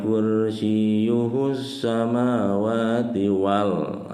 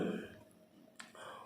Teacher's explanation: Ini hukumnya alif lam samsiah ya. Lamnya tidak dibaca, langsung masuk ke huruf sin yang bertasydidnya.